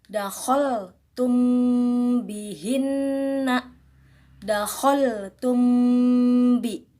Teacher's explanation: cara membacanya pun harus disamarkan serta didengungkan. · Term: ikhfa syafawi